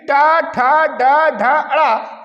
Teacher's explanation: जब हमारी जीभ जो है उल्टी टेढ़ी होकर के आवाज निकालती है तो उसे हम मूर्धन्य कहते हैं। अर्थात जब इन व्यंजन को हम निकालते हैं तो हमारी जीभ टेढ़ी हो जाती है, जैसे कि टा, ठा, डा, ढा, अड़ा, ये 5 होते हैं।